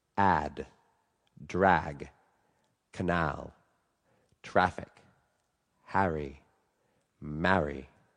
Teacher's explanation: every sound is a little bit more open but still very front